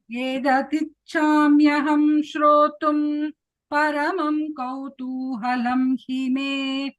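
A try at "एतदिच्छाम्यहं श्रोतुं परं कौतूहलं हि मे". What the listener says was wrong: It's not paramam there. What is there? You said paramam.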